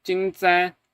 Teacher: the second syllable here has a null tone, a zero tone basically, or in Chinese linguistics parlance, it is a 轻 声, a light tone, a neutral tone, right?